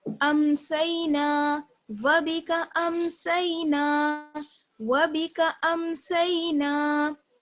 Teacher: سین کا مخرج یاد رکھیے گا. ثنایا سفلا کا کنارہ، زبان کی نوک ثنایا سفلا کا کنارہ